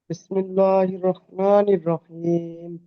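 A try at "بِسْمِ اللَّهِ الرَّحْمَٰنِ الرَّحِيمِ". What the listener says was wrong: মাশাল্লাহ ভালোই পড়েছেন এইটাই টান কম হয়ে গেছে টান দিয়ে নেবেন না ভালোই পড়েছেন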